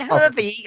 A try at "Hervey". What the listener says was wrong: Hervey. It sounds like you're trying to say the word Harvey. Hervey. It rhymes with pervy.